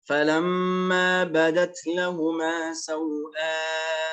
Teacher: قصر وإشباع. قصر الواو في مد اللين وإشباع الألف في مد البدل